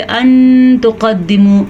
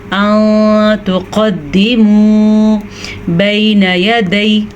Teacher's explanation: इख़्फ़ा का मतलब होता है नून को छुपाना, ठीक है। गुन्ना भी होता है और नून को छुपाना भी होता है। बाज़ लोग इसको इख़्फ़ा ऐसे समझते अन तुक़द्दिमू यानी कि वो बहुत मामूली से इख़्फ़ा करते हैं, या बाज़ लोग करते भी नहीं यानी कि वो पढ़ते अन तुक़द्दिमू।